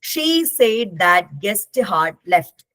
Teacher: For example, in the sentence she said that the guest had left, there are 3 words that are stressed. Said, guest, left.